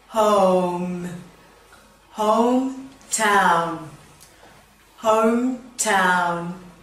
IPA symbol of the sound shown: əʊ